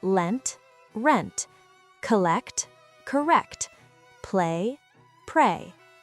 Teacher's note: Ul is a voiced alveolar consonant produced by placing the tip of the tongue against the alveolar ridge while air flows around the sides.